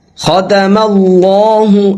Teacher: ختم اللہ، اللہ کے لام کو یہاں پہ پر کریں گے، موٹا کریں گے، کیونکہ لفظ اللہ سے پہلے جو حرف ہے اس کے اوپر زبر ہے۔